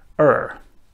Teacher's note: the r sound with the tip of the tongue bent backwards